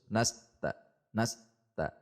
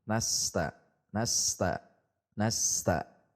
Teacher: huruf sin mengalir sehingga tidak boleh terputus